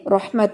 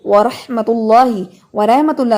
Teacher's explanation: اچھا اس میں یہ چیز ہے کہ جیسے سب اسٹوڈنٹس کے لیے آپ کو پتہ ہے اکثر بتائی جاتی ہے، جیسے اردو میں رحمت بولتے ہیں، جی اللہ کی رحمت ہے، تو رحمت نہیں کہنا، رحمت، رحمت، کیونکہ یہ جو ہے یہ عربی لفظ ہے، اس میں رے کی آواز رے نہیں را آتی ہے